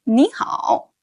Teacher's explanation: Both 你 and 好 are third tones, but when said together, 你 changed to a rising tone, making it sound like 你好.